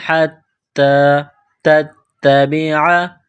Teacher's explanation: تا کو تا کے ساتھ پلس کرنا ہے، تا کو دبانا ہے